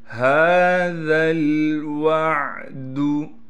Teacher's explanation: هَذَا الْوَعْدُ، ہا پر کڑا زبر ہونے کی وجہ سے ہا کو 1 الف کی مقدار کھینچیں گے، ذال کو باریک کر کے پڑھنے کے ساتھ ذال کو لام سے ملا دیں گے۔